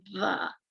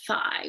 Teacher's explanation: voice th is when your vocal folds are moving so for words like the you can feel that whereas a voiceless th they're not moving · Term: voiced TH